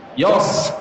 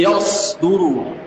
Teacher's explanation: Ya ketambahan shad, ya tipis, shad itu tebal.